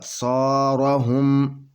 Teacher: اور یہ صاد حروف موٹا ہے، اور یہ الف ہے، الف سے پہلے زبر ہے، تو الف کو 2 حرکت کے برابر کھینچ کر پڑھیں گے